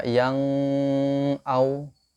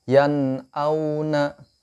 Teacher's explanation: tapi kita baca idhar jelas, nunnya terbaca jelas